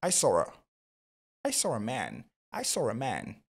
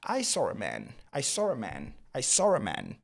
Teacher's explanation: lorsque vous prononcez ces deux mots de la manière la plus naturelle, il y a un raw qui va s'incrustrer. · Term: liaison